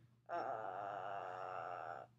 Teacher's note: kind of the lowest pitch that your voice can make and it sounds kind of creaky kind of like the california cool girl · a vocal fry is kind of the lowest pitch that your voice can make and it sounds kind of creaky